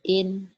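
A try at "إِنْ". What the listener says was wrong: idhar, an-in jangan ditahan.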